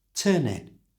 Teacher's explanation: we say this as one word by moving the last letter of the first word, in this case turn, over to the front of the next word. So slowly it's turn-in.